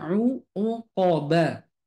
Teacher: Kenapa qof itu mantulnya suaranya o bukan e